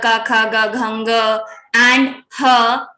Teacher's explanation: So and the kavarga, ka, kha, ga, ghanga, and ha, and also the visarga. These all the letters will be pronounced from kantha, throat.